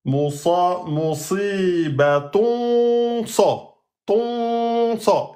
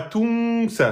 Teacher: Et on fait une rouna grave. Parce que c'est suivi d'une lettre emphatique.